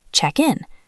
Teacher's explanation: The K sound jumps across the gap.